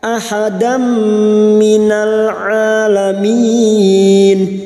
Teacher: U'adzibuhu ahadam fathah tanwin bertemu mim idgham bi gunnah masuk dan mendengung masuk pada huruf mim dan mendengung selama 3 harakat.